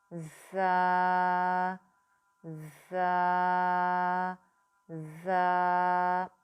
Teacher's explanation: زا جو ہے وہ سیٹی والا حروف ہے, اس کو ہم نے سیٹی کی آواز کے ساتھ ادا کرنا ہے اور اس کو بھی ہم 2 حرکات لمبا کر کے پڑھیں گے.